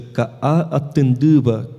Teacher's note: o T do tupi, quando ele vem após um fonema nasal, ele se nasaliza em ND